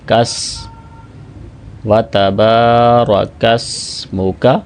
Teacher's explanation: وَتَبَارَ، وَتَّبَارَ نہیں ہوگا، وَتَبَارَكَ اسْمُكَ۔ یاد رکھیں، سین کی آواز میں سیٹی کی آواز ہوتی ہے